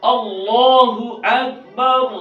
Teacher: تو صفت تفخیم ہی کی وجہ سے اللہ جو بت کا نام ہے اس سے اللہ کی اسم ذات میں فرق آئے گا. تو لہذا اللہ کے نام کو خوب موٹا کر کے پڑھنا ضروری ہے